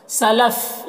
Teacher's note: یہاں پر وقف کریں گے تو سلف پڑھیں گے، فا کا زبر سکون سے بدل جائے گا